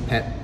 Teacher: when you see a T at the end of the word in Thai, it's swallowed. There's no air that comes out after it.